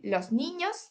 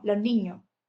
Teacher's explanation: La aspiración o pérdida de la s, los niños, pues en vez de decir los niños, decimos los niños.